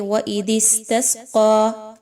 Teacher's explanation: یہاں پر آپ نے بہت اچھے سے دال کو نرمی کے ساتھ پڑھنا ہے۔ سین میں سیٹی کی آواز کو لائیے